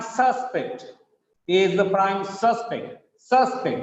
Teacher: He is the prime suspect. Suspect. The stress is on first syllable.